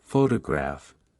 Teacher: in the word photograph the stress is on the first syllable